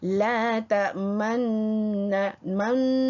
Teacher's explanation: dibaca secara ishmam dengan memuncungkan kedua bibir sejurus selepas mematikan huruf sebagai isyarat baris depan tanpa bunyi di samping gunnah atau dengung menyebut nun kedua. · Apabila kita ada dengung, tekankan, iaitu lidah kita naik ke atas gigi atas, ujung gigi atas, belakang gigi atas, dengungkan, kemudian lidah setelah diletak di belakang gigi atas itu dengung 2 harakat, kemudian baru kita muncungkan kedua bibir kita.